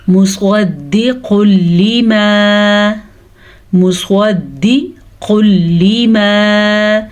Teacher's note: سواد کو پر پڑھنا ہے، دال کو نہیں کھینچ کے پڑھنا کیونکہ دال نیچے صرف زیر ہے، اور یہاں پہ تجوید کا ایک بڑا قاعدہ ادغام بلا غنہ ہو رہا ہے۔